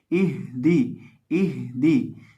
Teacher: अब यहाँ हम ये इस लफ्ज़ के अंदर हम जब हा को पढ़ेंगे तो हा को हमने हलक के आखिरी हिस्से से अदा करना है जो सीने के साथ मुत्तसिल है